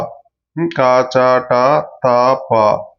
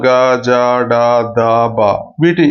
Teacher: వీటికి పొట్ట నుండి గాలిని తీస్తూ పలికే అవసరం లేదు. వీటిని అల్ప ప్రాణాలు, చాలా సరళంగా పలకవచ్చు అన్నమాట.